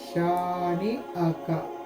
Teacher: شین الف جبر شا، نون زیر نی، شانی، حمزہ زبر آ، کاف زبر کا، شانی آ کا۔ شین کے اوپر الف مد ہے تو یہ ایک الف کے برابر اس کو ہم کھینچ کے پڑھیں گے